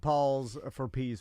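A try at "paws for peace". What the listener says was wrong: It's paws, like dog have paws, not Paul. P-A-W-S.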